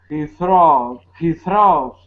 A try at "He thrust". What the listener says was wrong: I gotta hear that st, that T sound. He thrust. Thrust. Not all thrust, but like sun. Thrust.